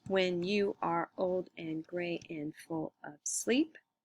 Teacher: follow the i am pattern instead of the troche pattern because you old gray full and sleep are the accented syllables not when are and and and of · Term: iambic pentameter